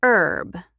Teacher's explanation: In America, we say commercial for a TV ad or just ad, not advert. And herb, in American English, the H is silent.